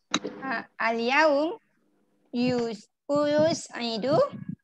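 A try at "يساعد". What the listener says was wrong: Sekali lagi yu ganti alif jadi u. U saja u. Okey, yusa aidu. Usa aidu.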